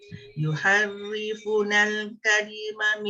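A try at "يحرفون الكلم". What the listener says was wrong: Panjang. Yang fa waw mad asli. Yuharrifunal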